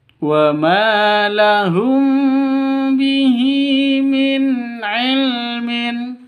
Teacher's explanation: ma panjang dua ketukan karena ada fathah